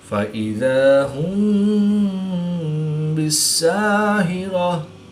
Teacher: میم ساکن کے بعد حرف با ہے تو یہاں پر اخفاء شفوی ہوگا، یعنی غنہ ضمع نہیں کر کے پڑھیں گے۔